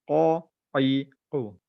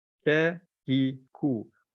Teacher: Qaf ni tebal, Kaf ni lembut sikit.